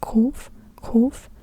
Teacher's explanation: a Q or like a deep K, deep in the throat.